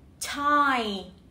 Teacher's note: I, tie, âm t, hai hàm răng cắn hờ vào nhau, lưỡi đặt giữa hai hàm răng và giật xuống, đẩy hơi ra thật mạnh. Tie, okay? Tie, nó không hề có chút rung nào cả. Không rung nha.